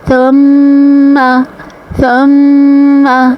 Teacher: میم کے اوپر تشدید ہے تو غنہ کے ساتھ میم کو ادا کریں گے۔